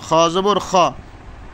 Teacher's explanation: খ জবর খ, হলকের শেষ হইতে